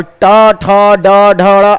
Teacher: ट, ठ, ड, ढ अगर आप बोलेंगे तो जिह्वा एक बार ऊपर और एक बार फट से नीचे आती है, इसको हम मूर्धा कहते हैं।